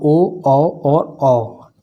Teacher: ओ औ और औ कंठ और ओष्ठ के हैं